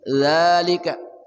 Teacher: ujung lidah bersama ujung gigi seri atas